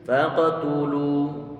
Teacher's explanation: Ini huruf taknya dia didommahkan, maka kita monyongkan bibir, lamnya juga didommahkan, kita monyongkan bibir kita juga, dan tentunya dia adalah termasuk huruf-huruf yang tipis.